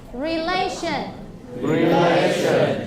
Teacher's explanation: the stress of this word is on the second syllable.